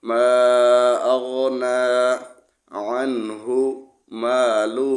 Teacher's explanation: یہاں پہ عین کو عین پڑھیں گے، حمزہ پڑھا جاتا ہے بعض دفعہ، کوشش کر کے یہاں پہ عین کو صاف پڑھنا ہے